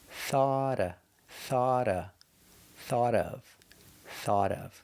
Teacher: we have a vowel with of, so the T changes to a D, a fast D.